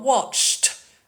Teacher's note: T sound because it's a unvoiced sound